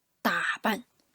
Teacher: It's a third tone plus a neutral tone, right?